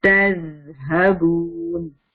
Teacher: ذال کو تھوڑا سا ٹائم دیں گے, جلدی سے سٹاپ نہیں کریں گے ورنہ یہ شیک ہو جائے گا